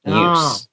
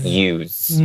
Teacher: because use Is being used as a noun As a noun here And not a verb We're pronouncing it with the S sound